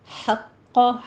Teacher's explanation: ہا وسط حلق سے ادا کریں گے